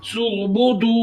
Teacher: वाव साकिन हो उससे पहले पेश हो तो वाव मद्दा होता है। एक अलिफ की मुकदार खींच कर पढ़ते हैं। सुबुदू रा मोटा यानी पुर पढ़ेंगे।